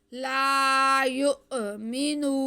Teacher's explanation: یؤمنون، آگے میم کے نیچے زیر ہے اور نون پہ پیش ہے، نون پہ پیش اور ساتھ میں واو ساکن ہے، تو یہ واو مدہ ہو گیا، اس کو ہم کھینچ کے پڑھیں گے